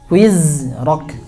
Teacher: Ya, jadi dia harus jahar ya, nggak boleh hamas. Huruf za itu jahar. Tulen jaharnya. Nggak nyampur huruf sa.